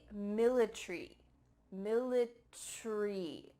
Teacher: In British English, they often cut out the A.